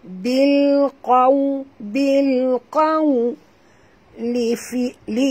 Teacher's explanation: qaw waw sifatnya sini lin, maka kita kena baca muncungkan mulut